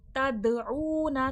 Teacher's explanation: तद में खलखले की सिफात दाल में वाज़े होगी, आवाज़ पलट कर सुनाई देगी, रिपीट होगी